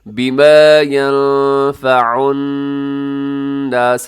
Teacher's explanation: یہاں نون ساکن ہے، ینفع نون ساکن کے بعد فا ہے، اب یہاں پہ اخفا کر دیجئے گا